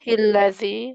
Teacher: Lamnya tarkik karena sebelumnya berharokat kasroh